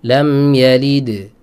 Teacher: kalau wakaf Qalqalah bukan Sugra namanya itu Qalqalah Kubro